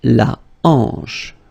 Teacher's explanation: H here is not pronounced, so you get the sound en, hanche at the beginning